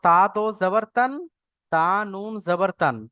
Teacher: এর দ্বারা এটা বোঝানো হচ্ছে যে দোজাবর লাগে তানবিন লাগালে যেরকম উচ্চারণ হয়, ওরকম তায়ের উপর যাবার আছে, নুনের উপর সাকিন লাগালেও পুরো সেম আওয়াজ হয়। তানবিন আর নুন সাকিনের আওয়াজ যে একই, সেটা এখানে বোঝানো যাচ্ছে